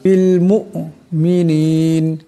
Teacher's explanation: এখানে হামজা আছে হামজা সাকিন আওয়াজটিতে একটি জটকা খাবে